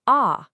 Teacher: Now say ah, your tongue just dropped down low.